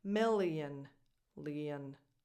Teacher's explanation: The second one is more of a tense E, milli. And then that O is not an O. You don't open your lips at all. It's just a schwa.